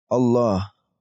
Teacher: Allah itu kita baca tebal teman-teman tafkhim